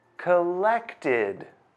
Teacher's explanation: Collect ends with the t sound. So, the correct answer is id.